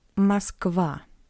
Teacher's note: in an unstressed position the letter O read as a weak a